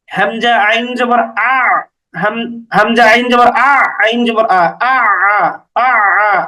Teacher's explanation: আইন জবর আইন জবর আ এরকম গলার মাঝখানে নিতে হবে আইনেরটা আইনের উচ্চারণটা গলার মাঝখানে নিতে হবে